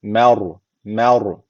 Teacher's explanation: harfi cezimli isse öncesindeki harf üstten bağlanıyorsa ra harfi kalın okunur ra harfi burada kalın okunuyor ama M ince okunuyor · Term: ra kalın